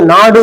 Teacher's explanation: நாடுன்னு சொல்லும்போது நா நல்லா சொல்லுவோம். டூங்கிற வார்த்தை வந்து ஒரு மாத்திரையில இருந்து அரை மாத்திரையா அளவு குறையும். அப்படிங்கும்போது அது மாத்திரை குறையறதுனால அது குற்றியல் உரம்னு சொல்லிருக்கோம்.